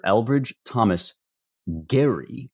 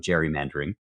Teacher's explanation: Elbridge Thomas Gerry with a hard G. It has now softened into a soft G in gerrymandering. This is a phenomenon known linguistically as lenition, the technical term for what happens when a letter becomes softer for any number of reasons.